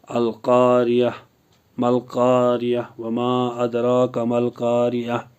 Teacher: گول تا پر وقف کرنا ہو تو گول تا ہائے ساکنہ میں بدل دی جاتی ہے